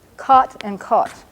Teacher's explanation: in some dialects of English including an awful lot of speakers in Oklahoma these two words are homonyms they're pronounced exactly the same so this short oh and this au are pronounced the same